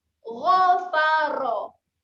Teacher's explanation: Huruf ra ni barulah makhrajnya di hujung lidah pergi gusi atas lah.